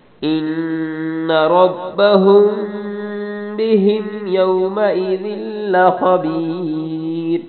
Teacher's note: نون پہ غنہ، را کو موٹا پڑھنا ہے، ہم میں بھی غنہ کرنا ہے